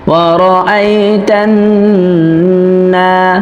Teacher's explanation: ওয়ারাআইতান, নুন আলিফ জবর না, নুনে এক আলিফ পরিমাণ টেনে পড়তে হবে, কেননা নুনে জবর আছে, তারপরে খালি আলিফ আসছে, এক আলিফ মাদ হবে।